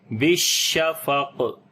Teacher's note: شین کے اوپر جو ہے وہ صفت تفشی کریں گے، سانس بھی جاری کریں گے، اور شین کے اندر صفت ہمس بھی ہوگی یعنی سانس جاری کریں گے، اور اس کے اوپر جو ہے وہ صفت تفشی بھی ہوتی ہے جس سے منہ کے اندر شین کی آواز پھیل جاتی ہے. اور قاف کے اوپر قلقلہ کریں گے جب رکیں گے اور یہ سٹرونگ قلقلہ ہوگا